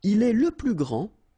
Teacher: You don't pronounce the final D